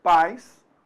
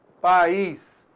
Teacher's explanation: Apenas uma vogal, vogal A. E o I, semivogal, o som decresceu.